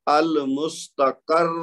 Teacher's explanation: را کو ایک تو ساکن کیا، دوسرا اس کو موٹا ادا کیا